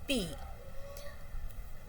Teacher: the both the lips are used and the air and air comes out with an explosion. So, it is called bilabial plosive.